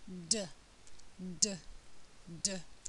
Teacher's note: produced in the same way as t um again there's a the air is stopped and then there's an explosion of air um the tongue is on the ridge um just behind the